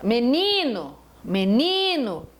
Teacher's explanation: No, ni, me. Menino, a tônica é a penúltima. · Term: paroxítona